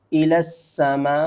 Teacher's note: اس کو ہم مد متصل بھی کہتے ہیں، اس کو ہم نے 5 الف کے برابر کھینچ کر پڑھنا ہے